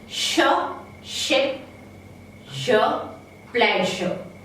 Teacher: We have 2 palato-alveolar fricatives